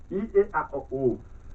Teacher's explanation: Pero aquí está la A, es la máxima abertura.